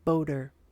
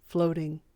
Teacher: long o words with the flap T